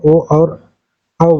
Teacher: कंठ और ओष्ठ दोनों से ओ और औ जो है कंठ और ओष्ठ से बोले जाते हैं।